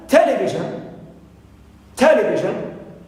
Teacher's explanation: They stress the first syllable, ta. But other times, they may pronounce it television.